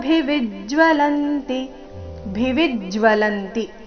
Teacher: ಎಲ್ಲಾ ಅಕ್ಷರಗಳು ರಸ್ವ ಭಿವಿಜ್ ವಿ ಮೇಲೆ ಆಘಾತ ಇದೆ